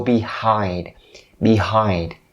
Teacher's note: don't forget to enunciate the n Sound the n Sound because it's a nasal voice